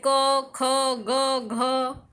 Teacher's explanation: इसमें फेफड़ों से आई वायु का स्पर्श करके निकलता है, इसीलिए स्पर्शी व्यंजन कहलाता है।